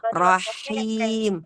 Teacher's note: sempurnakan sifat hams pada kata him. Rahim, Rahman, Ar-Rahman, ada sifat hamsnya kita pertahankan.